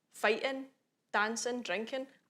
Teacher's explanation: Even things like ing, fighting, dancing, drinking, I don't think it's unprofessional to not say the G, because in Scots, the gerunds and the IN words, they're just IN, and that's how it ends